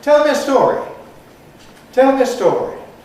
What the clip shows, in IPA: ˈtel mjə ˈstɔːri